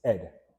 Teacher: So, a nuance about Jamaican Creole is that in many instances, especially at the beginning of a word, we drop our H's.